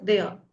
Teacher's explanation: If R comes at the end, then it is pronounced as a. If it comes in the middle, then it is R.